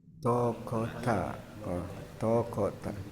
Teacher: Taknya jangan jadi berubah jadi tebal.